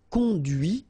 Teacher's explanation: final T is not pronounced